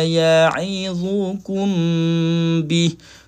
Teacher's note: Mim bertemu dengan ba kena dengun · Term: Ikhfa syafawi